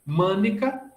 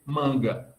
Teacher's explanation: E aí o I cai e o C se sonoriza virando pulga. Mânica, o I cai e o C se sonoriza em G